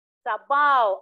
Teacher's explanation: Sabaw, ang diptonggo ay aw.